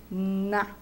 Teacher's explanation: o toque da ponta da língua no dente superior e o ar vai passar pelo nariz, né? Na, é um som nasal.